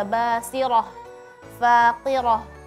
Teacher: Cuma perlu diperhatikan karena ayat yang dibaca ada basirah, faqirah, ya. Ha yang di akhir itu tipis. Jangan sampai terpengaruh dengan huruf ra yang tebal sebelumnya di roh.